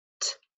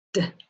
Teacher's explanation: T is voice off but D is voice on